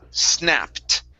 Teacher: the ed ending will sound like a t